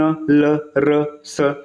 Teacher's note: वर्ष व्यंजन में भी ये जीभ जो है मसूड़ों को थोड़ा स्पर्श करते, जैसे न, ल, र, स, है ना, मसूड़ों के थोड़ा सा ऊपर, मतलब ये सब हल्का फुल्का ना आसपास स्पर्श करेंगे।